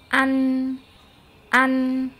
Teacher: Jadi selain makhrajnya dia ada gunnah, suara keluar dari rongga hidung, dia sifatnya juga gunnah karena suaranya itu keluar dari rongga hidung atau al-khayshum. Jadi suaranya itu sengau ya.